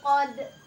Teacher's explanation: Biasa ini dipantulkan ya. Kenapa? Karena qalqalah kubro. Iya, qad. Iya, kayak gitu.